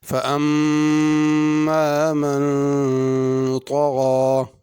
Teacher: فَأَمَّا مَن طَغَى، اما کی میم پہ غنہ ہے، من کے نون پہ غنہ ہے۔ طغى میں طا کو غین کو پر پڑھنا ہے، اور غین کے اوپر کھڑی زبر ہے، الف کی طرح کھینچ کے پڑھنا ہے۔